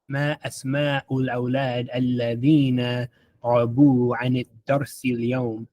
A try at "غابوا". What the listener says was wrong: And then غابوا. Make that first one long.